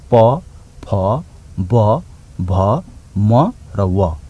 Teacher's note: प फ ब भ म र व दुईटा ओठको सक्रिय भएपछि उच्चारण हुन्छ। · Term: ओष्ठ्य